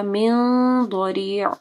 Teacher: یہاں پہ نون ساکن کے بعد ضاد ہے، اخفا غنہ ہوگا، اور ضاد کیونکہ موٹا حرف ہے تو موٹا غنہ ہوگا، ٹھیک ہے، ضاد کو ضاد نہیں پڑھنا، ضاد، ٹھیک ہے، ضریع۔